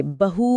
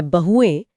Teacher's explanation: ध्यान देने वाली बात यह है कि बहू में जो बड़ी ऊ की मात्रा होती है, वह बहुवचन बनते ही छोटी उ में बदल जाती है।